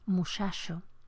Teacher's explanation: Nuestro fonema palatal central africado puede tener distintas realizaciones hasta llegar a la pérdida del elemento oclusivo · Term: articulación fricativa